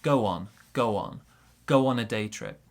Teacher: we'll link these sounds here with a w sound